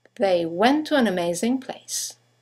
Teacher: two words one ending with a t the next one starting with a t they run into each other · you have the semi-vowel W that connects the vowels to and an to each other.